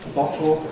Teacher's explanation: which ideally should have ‘lateral release’, [t] to [l] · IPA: [ˈbɒtl̩ ]